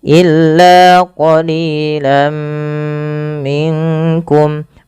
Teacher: Masukkan bunyi lan kepada mim